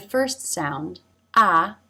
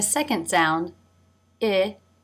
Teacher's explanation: in the first sound the jaw is dropped more